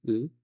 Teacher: 한글의 으와 비슷하지만 한글처럼 그렇게 입을 좌우로 벌리지는 않습니다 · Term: 으 소리